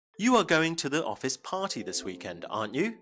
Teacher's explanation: Your voice should go up at the end of the sentence.